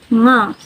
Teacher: voiced velar nasal